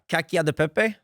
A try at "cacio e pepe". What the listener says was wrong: You say duh, Pepe? It's just an E. You were adding a duh though.